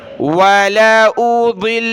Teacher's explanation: دونوں کو سخت کرنا ہے، تشدید کی وجہ سے پلس میں نون کے اوپر تشدید ہے تو غنہ بھی کرنا ہے